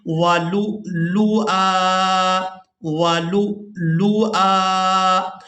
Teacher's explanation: लाम को हमज़ा के साथ मिलाएंगे तो झटके के साथ अदा करेंगे